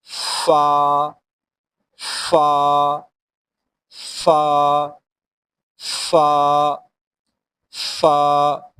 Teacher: نچلے والے دانتوں کو اوپر والے ہونٹ سے ملا کر پڑھیں گے